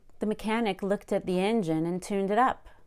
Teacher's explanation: notice how my pitch went up a lot on the word up at the end of that sentence